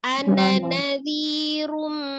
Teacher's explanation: cukup dengan ghunah saja tanpa nabar itu sudah menjelaskan mimnya tasdid